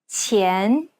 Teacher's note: The Chinese Q sound should be pronounced with the tip of the tongue touching the bottom teeth, while the blade of the tongue lays flat behind the front teeth.